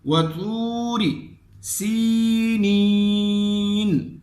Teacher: جب واو ساکن ہو اس سے پہلے حرف پہ پیش ہو تو اس کو واو مدہ کہا جاتا ہے، اور یہاں بھی ایک الف کے مقدار پہ مد ہوگا